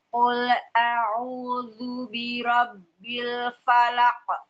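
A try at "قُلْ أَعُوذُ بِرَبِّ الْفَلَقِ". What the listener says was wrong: Ibu, qul jangan sambil monyong. Qul tidak. Qul na'am. Qul a'udzu birabbil falaq.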